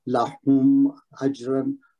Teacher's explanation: لہم اجرن، میم کا یہاں پہ اظہار ہوگا، اظہار شفی. اجرن میں جیم آ رہی ہے، یہ جیم کتب جد میں سے ہے، یہاں پہ کلکلا صغرا ہوگا کہ حرف کے بیچ میں آ رہا ہے.